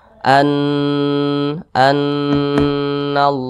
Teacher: Nun bertasydid ada mim bertasydid itu bacanya itu didengungkan warna musyaddadah didengungkan dua harakat atau kira-kira dua ketukan